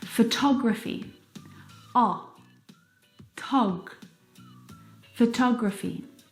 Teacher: the second syllable is the stressed syllable in this word photography · Now, if you look at the second example, photography, you can hear the pronunciation is different, and that's because the second syllable is the stressed syllable in this word.